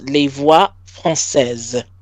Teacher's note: Between two vowels, that S is going to sound like a Z.